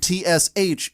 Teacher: the CH sound phonetically is a T followed by an SH sound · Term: blended CH sound